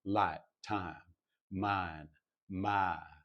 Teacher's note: it's almost like the second half of that diphthong is not there. It's just light, time, mine, my, instead of my. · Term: I diphthong